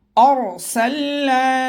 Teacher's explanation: را کو پر پڑھیں گے تھوڑا موٹا کر کے